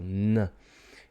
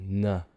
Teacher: the velum that is the soft tissue in the back of the throat is moving and it's sending most of the air through the nasal cavity in other words it's coming out your nose so release air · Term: alveolar nasal